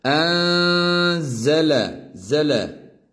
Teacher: Şuradaki uzun eliften bilebilirsiniz enzele dediğimizde şurada ihfa harfi var arada sakin nun ihfa harfine uğradığı için burada ihfa yapıyoruz